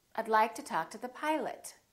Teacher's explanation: the O in Pilot becomes uh